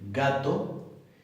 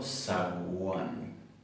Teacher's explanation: La G de gato y la G de zaguán no son iguales. Una es oclusiva y la otra es fricativa. En gato yo no puedo estirarla mucho, porque en un momento cierro completamente y digo gato, ga, ga.